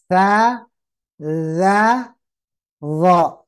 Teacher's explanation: Ujung lidah menyentuh ujung gigi seri atas.